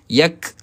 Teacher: huruf kaf tahan dulu kemudian lepaskan angin. Yak lepaskan angin tu angin yang sedikit percikan sahaja.